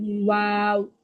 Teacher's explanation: ওয়াওটা হচ্ছে দুই ঠোঁট গোল করে পাতলা আওয়াজ করে পড়বেন